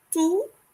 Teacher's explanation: Notice the final T is not pronounced. We just say tout. And the OU sounds like the English double O.